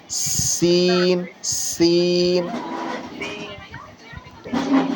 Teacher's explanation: سین ہے نا، سین، اس کو سیٹی کی طرح پڑھنا ہے